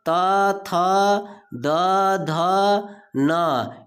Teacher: त वर्ग का उच्चारण स्थान दंत है।